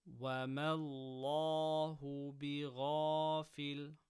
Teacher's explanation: Lam of Allah after fatha, full mouth.